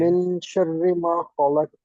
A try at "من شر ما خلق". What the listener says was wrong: نہیں آواز نہیں آئی مجھے، قلقلے کی آواز نہیں آئی، خلق، اونچی آواز سے